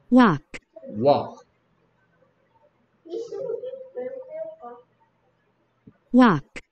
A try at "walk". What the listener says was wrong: 여기도 토크처럼 L 소리 안 납니다. 톨크가 아니고 월크가 아니고 토크 walk.